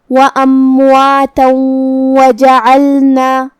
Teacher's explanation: ہم یہ تنوین کو واو میں ملا کے غنہ اور تشدید کے ساتھ یہ حکم کو ادا کریں گے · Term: ادغام